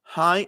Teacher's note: cuando digo hi estoy cerrando los músculos de la glotis acá abajo